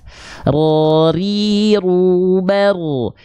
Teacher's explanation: Jadi getarannya jangan berlebihan, karena dia punya sifat namanya adalah takrir, bergetar tapi tidak berlebihan